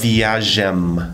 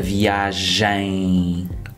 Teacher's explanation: that M, it's not like in English where you close your lips at the end. You don't close them. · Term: nasal sound